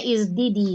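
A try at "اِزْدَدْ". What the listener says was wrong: Isdid. Matikan huruf terakhir. Yazdidu. Izdid.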